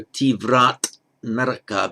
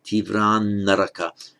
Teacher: because it's followed by an N, a word beginning N, so tivrat naraka becomes tivran naraka